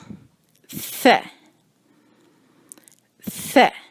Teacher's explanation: ثا جو ہے اس کو ادا کرنے کے لیے آپ زبان کی نوک کو سامنے کے دانتوں میں دبائیں گے. سامنے کے دانتوں میں دبا کے رکھیں گے، نہ بہت زور سے اور نہ بہت آہستہ.